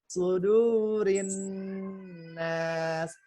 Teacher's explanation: nun bertasydidnya ditahan 3 harakat